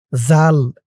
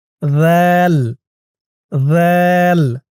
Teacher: যাল জিহ্বার মাথা উপরের দাঁতের মাথার সাথে লাগবে। যাল খেয়াল করুন, আপনাদের জিহ্বার মাথা উপরের দুই দাঁতের মাথার সাথে লাগান।